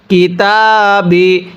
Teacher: তায়ের মধ্যে এক আলিফ টান দিব, হরফের উপর খাড়া চিহ্ন, হরফ এক আলিফ টেনে পড়তে হয়।